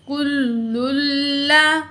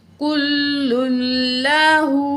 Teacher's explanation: तशदीद की वजह से लाम को हम भारी पढ़ेंगे, ठीक है, सख्त पढ़ेंगे।